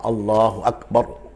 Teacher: baroknya itu berharokat fathah, maka roknya harus dibaca dengan tebal